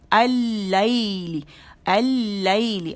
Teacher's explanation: اس نے پھر کیا کیا، لام تعریف کو اپنے اندر مرج کر لیا اور خود غائب ہو گیا لام، اور یہاں پہ لام مشدد ہو گیا